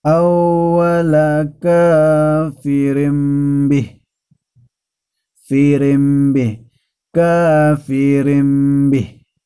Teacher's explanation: sukun atau tanwin yang diikuti huruf ba maka dan pembacaannya Hai nun sukun atau tanwin tersebut beralih menjadi m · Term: iqlab